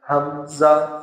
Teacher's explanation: حمزہ یہ حلق کے نیچے والے حصے سے ادا ہوتا ہے